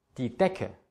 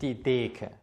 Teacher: Der Vokal vor C und K wird sehr, sehr kurz ausgesprochen.